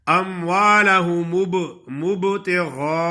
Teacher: ہونٹ با کی ادائیگی میں آپس میں ملے اور فوراً ہی جدا ہو جائیں